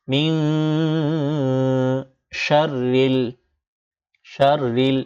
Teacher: নুন সাকিনের পর শিন আসছে, তাই এই নুনকে ইখফা করতে হবে। নুন না পড়ে, না পড়ে অনস্বরের মতো উচ্চারণ করতে হবে। ম রসিকার মি, আগে ছিল মিন, এখন পড়তে হবে ম রসিকার মি, অনস্বর মিং।